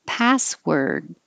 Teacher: now it looks like an or but it sounds like an er